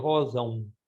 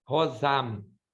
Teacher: No português, a gente não fala o M, a gente solta ele pelo nariz. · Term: som do nariz